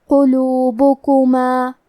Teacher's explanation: کلمت قلوبکما میں حرف القاف کو موٹی آواز میں پڑھیں گے